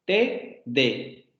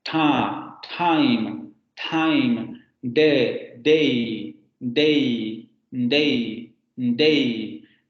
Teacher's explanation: Pero también en las oclusivas, por ejemplo, alveolares del inglés, tenemos que tener en cuenta que esas dos consonantes se pronuncian con la punta de la lengua en los alvéolos